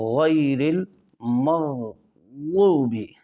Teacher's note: دونوں غین کو عین نہ بنائے بلکہ غین کر کے پڑھے